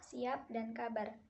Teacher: dilafalkan dengan bibir atas dan bibir bawah terkatup rapat sehingga udara dari paru-paru tertahan untuk sementara waktu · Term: konsonan hambat